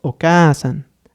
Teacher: Y al final tendríamos Oka-san, haciendo ese énfasis en la letra A.